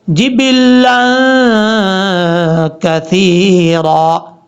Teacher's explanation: یہاں پر لام کے اوپر دو زبر کے بعد جب کاف آ رہا ہے تو یہاں غنہ کریں گے ایک الف کی مقدار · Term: نون تنوین کا اخفاء